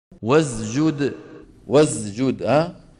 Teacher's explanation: خلط صوت السين بالزاي